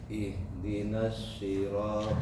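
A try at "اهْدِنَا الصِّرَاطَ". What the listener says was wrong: Si. Nah, begitu.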